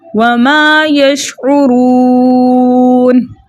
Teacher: را کے اوپر پیش ہونے کی وجہ سے ہم اس را کو موٹا پڑھیں گے